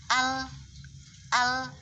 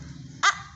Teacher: Lam ketika disukun bunyinya al, ada sedikit terlepasnya suara ketika sudah disukun. Al. Beda kalau hamzah tadi ketika disukun a sudah berhenti. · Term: bainiyah